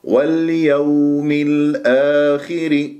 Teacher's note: إذا اليومي الآخري يعني أبين البينية، واليوم الآخري، والواو في كلمة واليوم كما مر معنا في الآية التي قبلها تكون واو لين لأنها ساكنة قبلها مفتوح، ما تنبرها